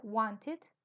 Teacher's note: siempre se pronuncia it it es entre I y e no es I ni e it Entonces sería Wanted ellos hay veces se tragan la t